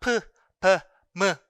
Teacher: 프, 브, 무 사운드를 바이레비얼 사운드라고 이렇게 이야기를 해요.